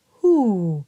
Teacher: it is very forward and it's in that top part that sort of cathedral ceiling of the hard palate where you will get a really nice ooh sound